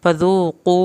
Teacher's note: फ़ज़ू ज़ाल को नरमी से लेकिन वाव साकिन के साथ आपने खींच के पढ़ना है, फ़ज़ूक़ू क़ाफ़ को पुर करके और वाव साकिन को खींच के